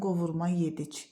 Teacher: Qovurma sözü əgər isim kimi yemək adı bildirirsə, vurğu sona düşəcək.